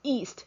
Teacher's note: in the word east there is also a glottal stop in the beginning